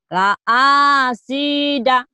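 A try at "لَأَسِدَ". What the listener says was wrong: Nggak ada yang panjang, J-nya doang. La'asida. Da-nya pendek, pendek. Zai-nya la'azi, zai. La'azida.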